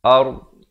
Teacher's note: waqafkan pada makhraj yang terakhir iaitu huruf dhad di tepi lidah